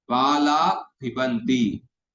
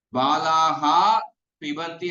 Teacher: तो उपद्मानीय विसर्ग का उच्चारण स्थान ओष्ठ है।